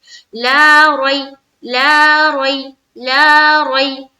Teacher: ला में अलिफ मद्दा किया, रई में यालीन किया, रा को पुर रखा, मुंह भरकर बोला, रई जल्द अदा किया, रई।